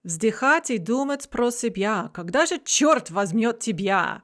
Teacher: masculine rhyme, which is when the stress falls on the last syllables of the rhyming lines. For example, «Вздыхать и думать про себя, когда же черт возьмет тебя?» And we have this stressed bya rhyme.